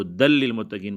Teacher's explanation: ہدن للمتقین کو ہدل للمتقین پڑھیں گے، یعنی نون تنوین کو ہم مدغم کریں گے لام سے